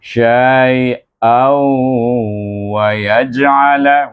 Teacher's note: Maka bila kita nak menyambung, kita idgham ma'al gunnahkan huruf tanwin ini dengan huruf waw. Bunyinya syai'au wa yaj'ala.